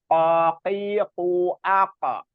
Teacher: Jadi untuk Kof itu tempatnya ee bagian lidah terdalam paling dalam gitu jadi qqi qu AQ bertemu dengan eh langit-langit atas jadi